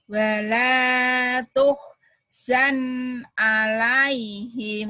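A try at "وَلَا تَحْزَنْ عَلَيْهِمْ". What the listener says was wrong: Wala tahzan, bukan tuhzan.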